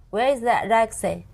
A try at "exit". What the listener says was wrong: Not the re, not re, X. It.